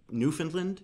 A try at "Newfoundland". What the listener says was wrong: Well, we would never say Newfoundland. We would say Newfoundland. We wouldn't even pronounce the D on the end of the name.